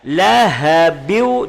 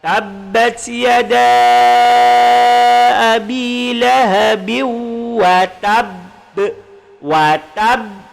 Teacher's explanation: Jadi kita masuk kemudian baru dengung. Jangan dengung dulu, tapi masuk dulu baru dengung. Jadi bacaannya lahabiu, dari bin masuk ke waw menjadi lahabiu, kemudian dengung. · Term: idgham ma'al ghunnah